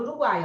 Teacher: Você vai ter aqui uma semivogal, uma vogal e uma semivogal. Tudo isso na mesma sílaba · essa sequência de fonemas, ela vai ser de uma vogal no meio e duas semivogais ao lado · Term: tritongo